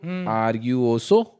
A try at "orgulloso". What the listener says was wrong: आ नहीं है, ओ लिखा है मैंने वो. orgulloso.